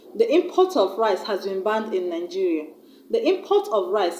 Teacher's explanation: There, I have stressed on the first syllable, I-M.